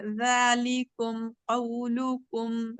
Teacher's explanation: ذال کو موٹا نہیں کریں گے، ذال باریک لیٹرز میں سے ہے. ذالکم نہیں بولیں گے، ذالکم قولکم.